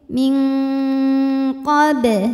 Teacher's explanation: nun sukun dibunyikan samarsamar siap-siap menuju makhraj huruf qaf disertai bunyi dengung dan dengungnya besar karena siap-siapnya banyak Q makhrajnya jauh dari Nun Ming suara banyak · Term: ikhfa ab'ad